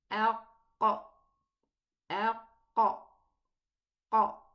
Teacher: The furthermost part of the tongue strikes upwards, striking the upper palate of the upper jaw. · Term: qaf